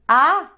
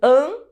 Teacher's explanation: que é diferente o A de abelha do an de anta que é nasalizado